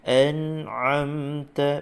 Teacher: Nun ini tidak boleh didengungkan, sekadar kita baca dengan jelas bunyi nun ini, tanpa dengung, tanpa qalqalah. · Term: izhar halqi